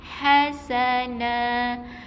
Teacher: Ha ni adalah ha yang pedas ha yang ada angin